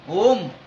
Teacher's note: नाक ते म्हणतात याचं तात्पर्य असं आहे की अनुनासिक जे आहे उच्चार अनुनासिकाचा तो नाकातूनच होत असतो. ओमचा जो उच्चार आहे तो नाकातूनच होत असतो. ओम नाक बंद करून आपल्याला ओम नाही म्हणता येणार, कारण त्यातला जो स्वर आहे अनुनासिकचा तो नाकातून येतो.